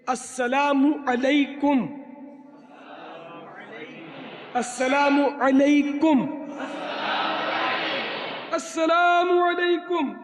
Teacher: اور لام ساکن ہے، بولے گا نہیں، لام کی آواز نہیں نکلے گی۔ اور میم پر پیش ہے، پیش نہ لگائے تو چل جائے گا، لیکن میم کے بعد لوگ واو بناتے ہیں، السلام لکھتے ہیں پھر واو لکھتے ہیں پھر علیکم لکھتے ہیں، تو یہ پھر غلط ہو جاتا ہے.